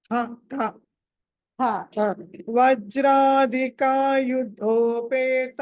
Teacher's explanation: వజ్రాధికాయుధో అన్నది మహాప్రాణం ఒత్తి పలకాలి